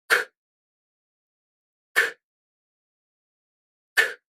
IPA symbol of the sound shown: k